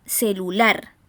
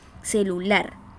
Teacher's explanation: la sílaba en la cual se carga la voz, la sílaba tónica, es la última, ¿verdad? Celular. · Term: palabra aguda